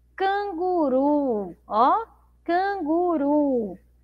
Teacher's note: é uma sílaba forte aqui, ó, ru